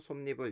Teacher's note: 뒤에 있는 단어가 여기 이로 시작됐죠. 그때 니은 소리가 덧나요. 그래서 솜니불 이렇게 되는 겁니다.